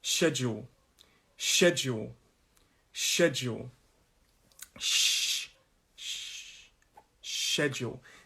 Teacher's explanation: schedule two syllable word and the stress of this word is on that first syllable